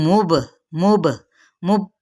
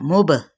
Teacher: बा पे कलकले का कलकला करना है यानी हिला के पढ़ना है